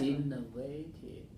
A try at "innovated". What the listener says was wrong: And you're going 3, you're changing to stress on the third syllable. Now you're going innovated. So can you hear the difference? Innovated, innovated, innovated. The base form is innovated. That's 3-1. So we want to keep, we just add another syllable at the end. We have 4-1. We don't want to change the stress over to this one. Innovated.